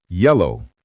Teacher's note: Yellow, stress on the first syllable.